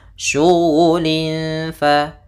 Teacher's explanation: Syughulin fa ada tanwin bertemu dengan fa, maka kita namakan dengan bacaan ikhfa. Nah, caranya adalah kita menyamarkan suara tanwinnya kepada huruf fa.